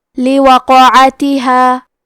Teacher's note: یہاں قاف کا حکم ہے قلقلہ. قلقلہ کا معنی ہے حرف ساکن کو ہلانا تو ہم حرف القاف کو ہلاتے ہوئے یہ کلمہ کو پڑھیں گے